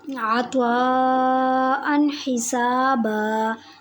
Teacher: اب میں نے نون تنوین پر غنہ نہیں کیا بلکہ اظہار کیا، میں نے نون تنوین کو ظاہر کر کے پڑھا۔